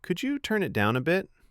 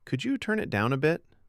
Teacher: Put gentle stress on the request word, turn, and softer weight on down a bit. Avoid a punchy, flat tone.